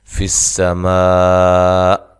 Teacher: سین کو باریک سیٹی کے ساتھ ادا کرنا ہے